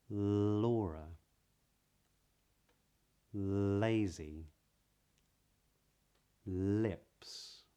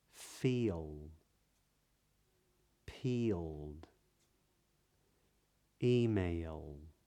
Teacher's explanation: speakers of this accent use a light L when it is followed by a spoken vowel sound